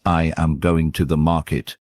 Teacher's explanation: The words going and market are stressed. While am and to are lighter, practice emphasizing the right syllables.